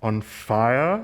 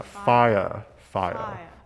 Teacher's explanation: it's an r colored schwa